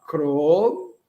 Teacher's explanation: Não nasalizamos. Vamos evitar nasalizar. Crom, eu falo cro e fecho a boca.